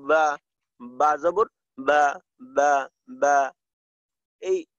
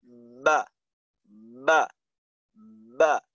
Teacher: এখানে একটু চাপ দিতে হবে, বার মাখরাজে চাপ দিয়ে উচ্চারণ করতে হবে, অর্থাৎ ঠোঁট, দুই ঠোঁট হইতে, দুই ঠোঁটের ভিজে জায়গা হইতে, তো ঠোঁটের সাথে ঠোঁটের সম্পর্কটা থাকবে একটু শক্ত, উপরের ঠোঁটটা দিয়ে নিচের ঠোঁটে একটু জোরে চাপ দিতে হয় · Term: জাহার